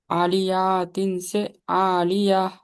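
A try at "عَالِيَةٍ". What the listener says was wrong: जबर जेर पेश को नहीं खींचना कभी भी। आलियतिन से आलिया, ऐसा। आलियतिन।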